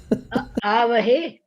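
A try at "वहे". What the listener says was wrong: Where are you getting the A?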